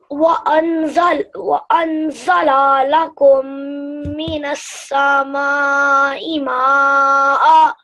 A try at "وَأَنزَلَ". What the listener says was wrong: So the pause was right, but here as la, you prolonged the la, which you shouldn't have. So وأنزل. وأنزل.